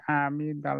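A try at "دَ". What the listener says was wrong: আমিদা না, টান নাই, মনে রাখতে হবে এক জবর এক জবর হরকত বলে হরকতের উচ্চারণ তাড়াতাড়ি পড়ে পড়তে, এটা মনে রাখতে হবে।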